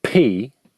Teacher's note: when you say words like pee you project a burst of air out of your mouth